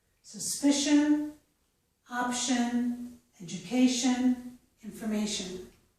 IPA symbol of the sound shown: ʃən